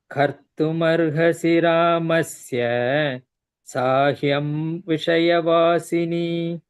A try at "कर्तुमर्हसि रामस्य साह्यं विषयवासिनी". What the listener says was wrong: again कर्तुमर्हसि रामस्य stop there instead of ramasya don't make it dirgha there कर्तुमर्हसि